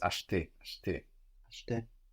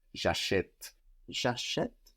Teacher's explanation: The E will change sound. So that E that can be totally disappeared in acheter now becomes clear and pronounced. And it has a written accent on it.